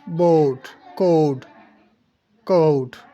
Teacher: आ और ओ को बहुत शार्ट करके पढ़ना है आपने